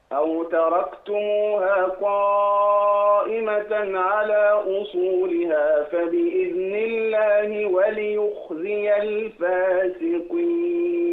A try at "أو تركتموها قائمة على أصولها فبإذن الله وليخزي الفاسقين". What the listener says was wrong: تلاوة طيبة، وقدرا نسيت أو نسيت المنفصل، وأيضا قرأته بالقصر، بس أحبتي على أصولها ده مد منفصل.